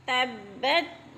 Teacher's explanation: تبت با مشدد ہے، ذرا سختی سے جمع کر پڑھیں گے